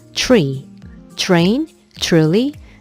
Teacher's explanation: 영어의 TR 발음은 츠 소리가 살짝 들어간다고 배웠었죠?